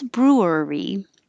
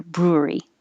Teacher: So technically it is 3 syllables, brewery. But you can be a little more lazy and push it together, brewery.